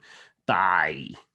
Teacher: You can lose the closure, but have some of the creakiness left behind as a cue to the glottal nature of the phoneme